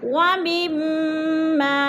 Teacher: میم پہ ادغام ہو رہا ہے اور غنہ کریں گے، سختی سے جمع کر پڑھیں گے